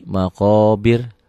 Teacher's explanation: rohnya tipis karena sebelum ro dimatikan ada baris di bawah